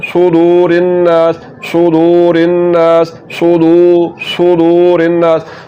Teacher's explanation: सुदू नहीं पढ़ना बल्कि सुदू सुदू। पेश को लंबा करना है